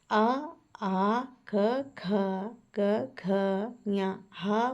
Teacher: ಈ ಅಕ್ಷರಗಳು ಕಂಠದಲ್ಲಿ ಹುಟ್ಟಿ ಹುಟ್ಟುವುದರಿಂದ ಇವುಗಳನ್ನು ಕಂಠ ವರ್ಣಗಳು ಅಂತ ಕರೀತಾರೆ ಅಂದ್ರೆ ಅಂದ್ರೆ ಕಂಠದಿಂದ ಹೊರಗೆ ನೋಡಿ ಹ ಆ ಅದೆಲ್ಲ ಕಂಠದಿಂದ ಬರುವಂತದ್ದು ಹಾಗಾಗಿ